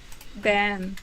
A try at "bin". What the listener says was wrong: Yeah, so you said bean, and I would say bin. Bin. And it's not wrong to say bean. Again, it's variation. Like I think some Canadians and British people, it depends on the accent.